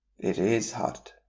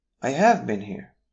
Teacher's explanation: In order to emphasize or strengthen a point, extra stress is placed on auxiliary words. The highlighted word will show you where the emphasis is.